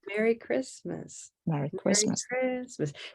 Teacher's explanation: Merry Christmas with stress on the second word